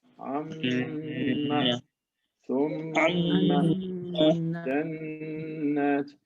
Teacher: When you pronounce all of these, you have to feel a vibration in your nose. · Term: ghunna